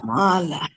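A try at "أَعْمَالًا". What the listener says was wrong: আমালা আরেকজন শুনলে যেন বুঝতে পারে এটা আইন আর যদি আমি আমালা পড়ি আইন শব্দটা বাদ পড়ে যাচ্ছে তাহলে অর্থ হবে না অর্থটা একটু জানলে আমাদের একটু সুবিধা হবে কোল অর্থ আমরা জানি তাই না কোল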